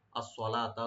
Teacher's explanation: সাদ এখানে একটু মোটা হবে, ডিপ হবে। লাম ওপেন রাখবেন, একালে টানবেন।